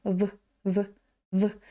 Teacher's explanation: Ось така одинарна в як в українській просто кусаємо нижню губу